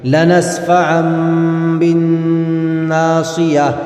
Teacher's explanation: تو نون ساکن کو میم سے بدل کر پڑھیں گے، اسی طرح تنوین کو میم سے بدل کر پڑھیں گے اگر با آ رہا ہے آگے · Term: قلب